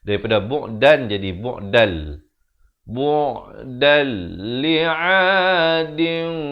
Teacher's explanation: hukum idgham bila gunnah, masuk tanpa dengung